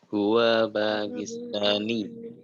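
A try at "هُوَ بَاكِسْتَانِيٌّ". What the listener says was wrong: Nah, diperhatikan wawunya di sini pendek, jadi tidak usah dipanjangkan. Kita bacanya huwa bakistani.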